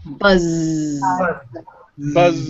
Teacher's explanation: It's almost in the same spot as the S, but if you put your hand on your throat, you're going to feel it in your throat. Try it. So with the Z sound, the Z sound, it's made by pushing air through your voice box in your throat. · So with the Z sound, the Z sound, it's made by pushing air through your voice box in your throat. That's why you feel it. That means it's a voiced consonant. We are making a sound with our throats.